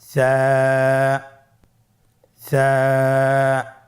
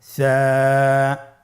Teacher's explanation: সা হরফটির মাখরাজ হলো উচ্চারণের স্থান জিহ্বার আগা সামনের উপরের 2 দাঁতের আগার সঙ্গে লাগিয়ে উচ্চারিত হয়। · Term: সায়ের মাখরাজ